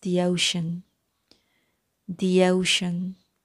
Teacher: so इनको link करते हुए y sound जो है वो create होगी